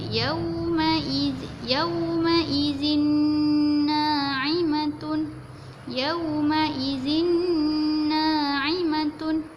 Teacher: Yang ni lagi senang kita nak buat sebab tanwin ni sama seolah-olah macam huruf nun lah. Bila nun berjumpa dengan nun, dia jadi huruf nun lah. Jadi hujung lidah kita tu mesti kena gusi hadapan.